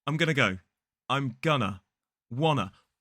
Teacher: we completely remove the to sound or the t sound, and it just becomes wanna, and gonna.